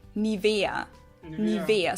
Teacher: So the emphasis is on the E, Nivea.